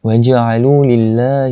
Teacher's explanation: lam pada lafzul jalalah ni dibaca dengan muraqqaqah, nipis, sebab dinipiskan.